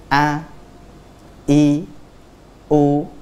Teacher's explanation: contohnya huruf hamzah keluar dari apa tenggorokan bagian bawah nah kita keluarkan dari tenggorokan bagian bawah a i u ah